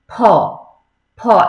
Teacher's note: ফ, ফ কিন্তু দুটো ঠোঁট একসাথে লাগবে, ফ ফ। আমার এমনও অনেকে দেখা আছে, আমার এক কলিগই ফ উচ্চারণ করে, ফুল ফুল এরকম উচ্চারণ করে, কিন্তু আসলে কিন্তু ফুল হবে না, ফুল ফুল, দুইটা ঠোঁট একসাথে লাগবে।